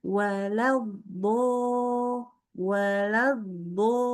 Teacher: jadi yang kerja itu bibirnya membulat nge-o gitu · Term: membulatkan bibir